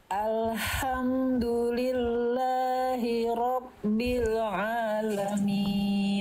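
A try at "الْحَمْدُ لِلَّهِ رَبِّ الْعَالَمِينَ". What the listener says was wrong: Bagus, lanjut.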